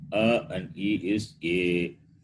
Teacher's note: a combination of the sound which is produced from the throat which is a and ending with the sound produced with the palette which is e